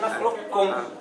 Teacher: قالون قانون شحال بالادغام كامل نخلقكم، هكا ادغام كامل قانون. ألم نخلقكم ادغام كامل مشدد، الكاف مشدد